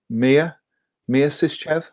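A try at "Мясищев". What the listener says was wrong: No, it's pronounced Maya, not Mia. Not Mamma Mia, okay. Mamma Maya.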